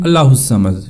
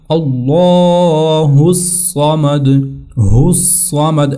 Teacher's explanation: لام کو ایک تو موٹا کرنا آپ نے اور یہاں پر اس کو لمبا کرنا کیونکہ کھڑا زبر ہے، تو ہوگا اللہ الصمد، الصمد۔